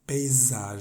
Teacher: entre esos dos sonidos de vocales vamos a hacerla vibrar así si te pones la mano en la garganta y pronuncias esa s se siente que vibra